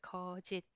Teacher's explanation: When it's 받침, it is 드 sound, closed 드 sound.